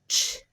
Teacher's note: the air comes out with a pop and a H sound